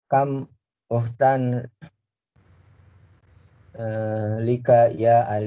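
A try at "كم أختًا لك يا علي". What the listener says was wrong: Laka, laisa lika, laka. Ya Aliyu.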